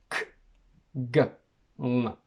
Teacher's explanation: We have sh, y, j, r, ch, j. Velar, which involves the tongue and the velum, or soft palate.